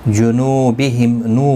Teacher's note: واو مدہ ہے ایک الف کی مقدار کے برابر کھینچ کر پڑھیں گے